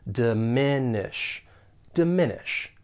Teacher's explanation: three syllables and the stress is on that second syllable